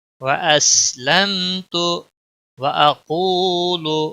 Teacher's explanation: میم ساکن کے بعد تا آیا ہے، اس لیے یہاں پر اظہار شفوی ہوگا · قاف کو موٹا پڑھیں گے اور واو مدہ ہے، 1 الف کے برابر کھینچ کر پڑھیں گے